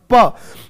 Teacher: 'पा' के लिए, हवा एक बार पूरी तरह से रुक जाती है और फिर बाहर निकल जाती है, लेकिन यह पहले रुक जाती है। · तो नहीं, रुक जाती है तभी तो अवरोधी बोल रहे। प तो बोलने के टाइम पूरा हवा एक बार रुक जाता है, फिर निकलेगा, लेकिन पहले रुकेगा, पूरा मुंह बंद हो जाएगा। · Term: स्टॉप